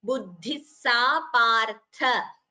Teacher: This word partha, only tha is mahaprana, not pa.